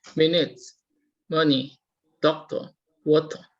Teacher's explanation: you can hear that the stress is all at the first syllable. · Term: syllable stress